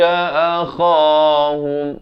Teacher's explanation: kha hujung kerongkong ini